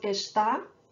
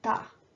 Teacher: we often drop the first syllable of the verb estar in spoken Brazilian Portuguese